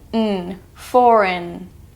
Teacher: we have the GN sound, as in foreign. It just sounds like n. The G is silent.